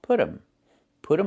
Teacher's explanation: And you hear um instead of them.